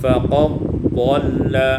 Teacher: Pada ayat 108 faqad dhalla idghamud dal fi dhad diidghamkan dal pada dhad sehingga kita baca faqad dhalla.